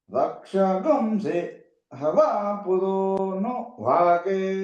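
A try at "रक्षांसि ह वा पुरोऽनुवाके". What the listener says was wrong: అబ్బే అలా రక్షాగుంసి హవా పురోను వాకే. పురోను అంటున్నారండి. పురోను పైకి లేదండి. రక్షాగుంసి హవా పురోను వాకే.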